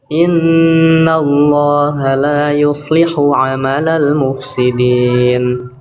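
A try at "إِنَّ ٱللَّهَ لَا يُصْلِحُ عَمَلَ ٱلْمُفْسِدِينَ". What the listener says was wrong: Amalul mufsidin. Nafas dan suaranya jelas. Jangan cuma lewat. Amalul mufsidin. Jadi jangan langsung masuk ke sin. Mufsidin.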